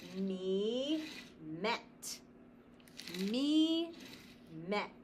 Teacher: Consonants close the door, and the vowel cannot say its name. It cannot say E, it says eh. So we use the short vowel sound.